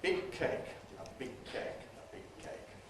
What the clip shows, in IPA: ə ˈbɪg̚ ˈkeɪk